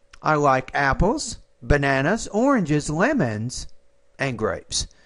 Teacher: once you get the grapes that's when your tone drops · you have five different items here that you're explaining the tone should be rising on each item except the last